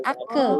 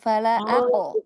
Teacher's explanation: Jadi dibacanya jangan ake, tapi diqalqalahkan fala ako. Kalau dalamnya masih basah.